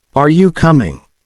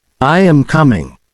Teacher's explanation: notice how the pitch of your voice Rises at the end